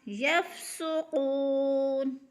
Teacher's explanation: یف کو ہلانا نہیں ہے کیونکہ فا حروف قلقلہ میں سے نہیں ہے ، جلدی جلدی ادا کرنا ہے، یفسقون، سین کو سیٹی کی